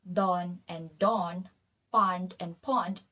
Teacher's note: it is the merging of the two low back vowels o like hot and o like log, which results to homophonous pairs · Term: low back merger